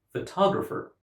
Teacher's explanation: because the speaker puts the stress on the second syllable, we understand that the word is photographer